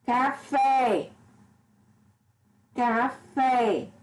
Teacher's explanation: É uma palavra oxítona porque a última sílaba é a mais forte.